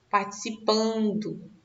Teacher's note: esse N aqui, ele está só nasalizando o A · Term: dígrafo vocálico